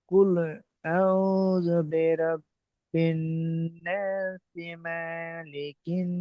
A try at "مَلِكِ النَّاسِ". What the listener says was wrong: মা আবার টান হয়ে গেছে, আবার মা টান হয়ে গেছে। মালিকিন নাস।